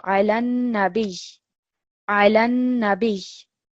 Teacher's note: You're putting just emphasis on this ya because of the shadda which is above it. So it's a double ya. And you're not prolonging it at all.